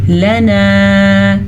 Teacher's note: لنا لام کو لمبا نہیں کرنا. ہاں الف مدہ ہے، نون زبر الف نا، اسے ہم نے کھینچ کے پڑھنا ہے